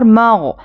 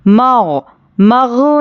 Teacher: غین پر بھی قلقلہ نہیں کرنا ہے، حرفوں کو بالکل بھی وہاں سے اپنی جگہ سے نہیں ہلانا ہے، ان کو مغ مغ نہیں پڑھنا ہے، ٹھیک ہے۔